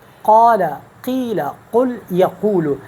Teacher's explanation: اوپر کے تالو کے ساتھ اور اس لحات کے قریب، تو وہاں سے ادا ہوں گے قاف